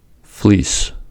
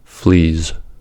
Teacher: S is unvoiced and is the counterpart to the voiced z. To pronounce s and z, the tip of the tongue approaches the alveolar ridge but doesn't quite touch it.